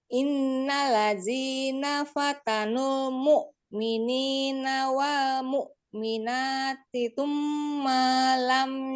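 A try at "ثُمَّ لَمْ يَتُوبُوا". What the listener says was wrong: Mimnya kurang dengung. Ma-nya pendek aja tapi. Jangan panjang-panjang.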